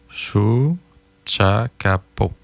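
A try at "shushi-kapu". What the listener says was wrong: On t'a dit un A, c'est un I, là. Chouchi-capo. Chouchi-capo.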